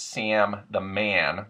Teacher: the short A, becomes yeah when preceded by an M or an N